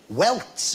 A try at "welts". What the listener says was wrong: Welts. No, welts with a T, not with a K.